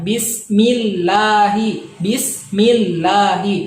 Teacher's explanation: tarqiq yang artinya tipis hai makna tarqiq artinya tipis rumusnya ialah apabila lafadz allah sebelumnya harus kasrah sebelumnya kasrah maka cara bacanya dibaca tipis · lafaz Allah apabila sebelumnya kasroh ya, maka cara bacanya harus ditipiskan. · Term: tarkik